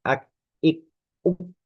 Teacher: huruf kaf itu sifat yang utamanya adalah tertahan kuat